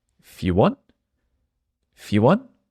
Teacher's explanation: the letter i on if disappears